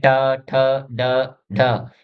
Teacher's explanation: जीभ की नोक ऊपर की ओर यानी मूर्धन्य जिसे मसूड़ों को इनका जब हम उच्चारण करते हैं तो जो जीभ है मसूड़ों को टच करती है।